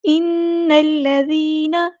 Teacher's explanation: ذال کو ہم نے باریک اور نرمی سے ادا کرنا ہے